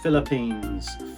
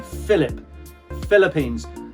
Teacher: I don't pronounce the P or the H at all. It is pronounced as an F. So Philip, just as if it was F-I-L-I-P. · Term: F sound